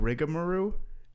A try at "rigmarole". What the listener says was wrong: Yeah, but you were saying with ER rather than a riga.